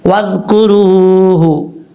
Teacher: حرف مد واو ساکن سے پہلے پیش ہے، اس لیے یہاں پر واو مدہ ہے، ایک الف کی مقدار اس کو لمبا کر کے پڑھیں گے